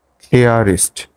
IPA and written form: ˈklɪərɪst (clearest)